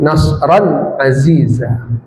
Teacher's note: tanwin bertemu ain izhar izhar halqi dibaca jelas tanwinnya